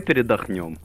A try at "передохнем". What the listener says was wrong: Мы передохнем. Мы передохнем, а не передохнем. Это ударение расставляй.